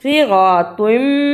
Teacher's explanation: صراطم اسے صراطم نہیں پڑھنا، صاد کی جگہ پہ سین کی آواز نہیں آنی چاہیے اور طا کی جگہ پہ تا کی آواز نہیں آنی چاہیے